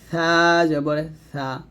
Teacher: জিহবা উপরের দাঁতের আগায় লাগবে নিচের দাঁতে লাগানো যাবে না